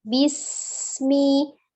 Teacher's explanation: hati-hati tidak dipantulkan di sin sukunnya ya, hanya dia memiliki sifat as-shafir, desis, bismi, ya, tidak bismi ya, tidak kol-kolah.